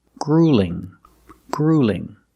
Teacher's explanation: the first vowel is a long ooh like food and boot